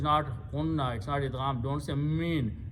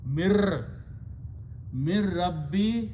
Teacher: ra changes the sound of noon to itself